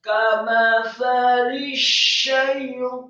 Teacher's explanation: Kamathali syaitani, kata asyaitani, sya-nya ditasydidkan, tafkhim tebal, fathah 1 harokat, kemudian ya-nya dibaca tipis sukun, kemudian huruf ta, syaitani, huruf ta dibaca tafkhim, membaca huruf ta lidahnya di langit-langit atas. Syaitani, kemudian fathah 2 harokat karena harokatnya tegak atau harokatnya miring namun setelahnya ada alif.